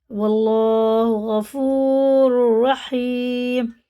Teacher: واللہ غفور رحیم، بڑا ہا ہے، یا ساکن سے پہلے زیر ہے، کھڑے زیر کی طرح کھینچ کے پڑھیں گے، دونوں را پورے ہیں، اور اللہ کا لام بھی پورے ہے کیونکہ زبر کے ساتھ ہے، منہ بھر کے پڑھیں گے موٹا کر کے